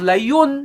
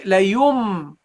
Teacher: we drop the noon and we pronounce the meme